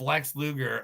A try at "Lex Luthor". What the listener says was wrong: You're saying Gur? You mean Luther, right? Okay, Lex Luthor. You're saying Luger.